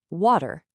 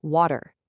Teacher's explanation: You don't stop the airflow for a hard T. It's just a quick, smooth flap. · Flapping happens when a T or a D sound gets caught between two vowels, right before an unstressed syllable. Instead of a hard, crisp burst of air, your tongue just does a lightning-fast tap against the roof of your mouth.